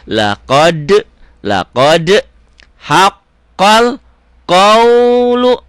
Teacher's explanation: Laqad ada e-nya karena qalqalah, karena huruf-huruf mantul ya.